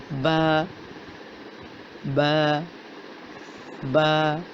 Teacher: با کا مخرج ہے دونوں ہونٹوں کی اندرونی تری کے ملنے سے با کی ادائیگی ہوتی ہے۔